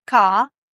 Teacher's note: in British English, you say car. So the r isn't pronounced